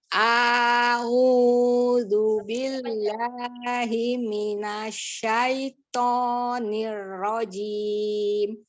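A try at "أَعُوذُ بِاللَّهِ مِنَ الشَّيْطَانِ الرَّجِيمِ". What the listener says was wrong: sekali lagi ya, tidak dipanjangkan hamzahnya. A'udzu billahi minasyaitonir rajim.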